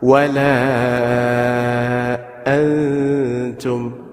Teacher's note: catch your ikhfas with a ghunna. Nun sakin followed by ta.